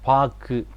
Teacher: பாக்கு என்று சொல்றப்ப எங்களுடைய அந்த கடைசி உகரம் உச்சரிக்கிறப்ப இதழ் குவியாம இதழ் விரிந்து உச்சரிக்கப்படுது அதை தான் நாங்க குற்றியல் உகரம் என்று சொல்லுவோம் முற்றியல் உகரம் இந்த உகரம்